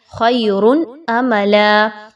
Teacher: یاد رکھیے یہاں پر حمزہ کے ساتھ یہ ورڈ موجود ہے، خیر املا، عین نہیں پڑھنی، حمزہ کو پڑھنا ہے، عین کا مخرج یہاں پر ادا نہیں ہونا چاہیے۔